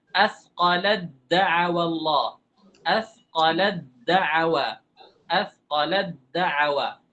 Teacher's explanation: Dimasukkan ta kita ubah menjadi dal. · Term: ta masuk ke dal